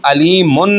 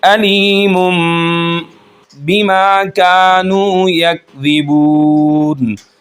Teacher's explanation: جب نون ساکن یا تنوین کے بعد با آئے گا تو ہم جو نون کی آواز ہوگی اس کو ہم میم میں بدل دیں گے ، علیمن کو مم میں بدل دیں گے، بما کانوا یکذبون، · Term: اقلاب